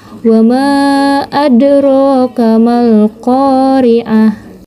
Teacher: memantulkan huruf kokolahnya dengan ringan dan menyambungkannya dengan bacaan setelahnya, sebab kokolah ini tepat berada di tengah kata. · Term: kokolah sugro